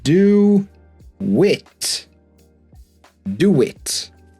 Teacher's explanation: We're going to add w. So we've got do, the round sound. The next word starts with a vowel sound. So we're going to add a w.